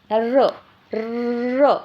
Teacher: र आपण जेव्हा रचा उच्चार करतो तेव्हा काय होते? आपल्या जिभेमध्ये एक प्रकारचं काय होते? कंपन तयार होते. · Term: कंपित व्यंजन